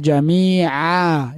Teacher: Jami'a harus keluar dari mulut, bukan jami'a melalui hidung